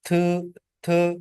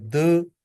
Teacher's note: जो टंग है, जो जुबान है, यह ऊपर वाले जो टीथ है, इनको टच करती है और यह साउंड प्रोड्यूस होती है। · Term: डेंटल साउंड